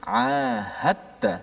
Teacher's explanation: dal itu dimasukkan secara totally dalam ta. Sebab tu ada sabdu di atas ta dan tidak ada apa-apa tanda di atas dal. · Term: idgham